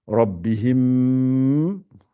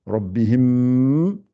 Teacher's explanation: Le ra est gonflé ici.